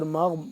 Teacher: غین کو موٹا پر کر کے پڑھیں گے